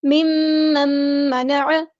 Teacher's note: یہاں پہ نون ساکن کے بعد میم آئے ادغام مع الغنہ ہوگا